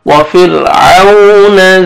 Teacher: وفرعون ذی الاوتاد، وفرعون، را ساکن سے پہلے کسرہ، را کو باریک کریں گے، وفرعون، واو لینے نرمی سے ادا کریں گے